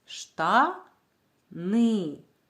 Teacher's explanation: перший склад говориться голосніше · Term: наголошений склад